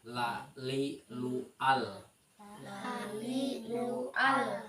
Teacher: huruf lam itu keluar dengan menggerakkan semua lidah dan bertemu dengan ujung langit ujung langitlangit mulut